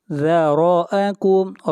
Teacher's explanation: را کو موٹا پڑھیں گے، را کے اوپر زبر ہے